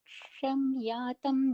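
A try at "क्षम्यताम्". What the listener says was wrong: Yeah, kshamyatam with a tam is a dirgha.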